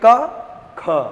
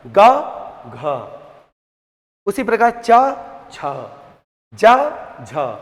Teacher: तो ख बोलेंगे तो ह का साउंड आएगा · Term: महाप्राण